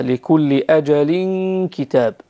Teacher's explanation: في هذه الغنة عند حرف الكاف يخرج من الأنف فقط مرققا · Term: الإخفاء